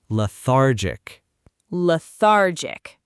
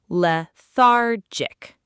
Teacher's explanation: Notice the stress is on the middle syllable.